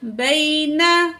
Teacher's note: मुस्वद्दिक़ल लिमा, बा ज़बर या बई, नून ज़बर ना, बैना, तो यहाँ या साकिन है, माकबल ज़बर है, यहाँ पे हम जल्दी से पढ़ेंगे, या लीन है